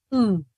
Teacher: La U o la O, la posición de los labios está como en forma de círculo o bueno, están redondeados, ¿verdad? Pero con la U velar o posterior cerrada, los labios están en posición alargado